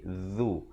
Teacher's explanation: Yang pertamanya hamzah, yang keduanya ain. A'udzu, zu di hujung lidah. Hujung lidah keluar di antara dua gigi.